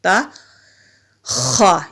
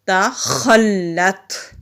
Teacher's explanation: خا کو جب ہم حلق سے نکالتے ہیں تو ہلکی سی رگڑ کی، یعنی کہ جس طرح خراش کی آواز ہوتی ہے اس طرح آتی ہے